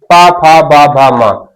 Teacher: अगर ओष्ठ काम नहीं कर रहे हैं तो बिना ओष्ठ की सहायता से इनको भी बोल पाना संभव नहीं है। अर्थात ऐसे वर्ण जिनके उच्चारण के लिए ओष्ठ की सहायता लेनी पड़े तो हम ऐसे वर्णों को ओष्ठ वर्ण कहेंगे।